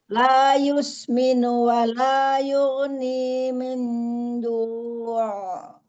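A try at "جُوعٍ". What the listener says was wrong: Ini apa? Jadi seolah ditebalkan ya. Ainnya jangan tebal. Ju. Gitu aja. Jangan juang. Umi buat ngedapetin ainnya itu menekan. Jadi seolah-olah ainnya tebal jadinya. Jadi ada juang gitu.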